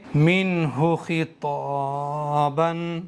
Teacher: اس نون پر بھی اظہار کا قاعدہ بنا ہوا ہے، غنہ اخفا نہیں کریں گے